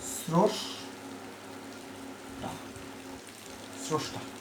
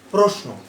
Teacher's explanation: রফলাযুক্ত ব্যঞ্জনের আদ্য অ ও রূপে উচ্চারিত হয়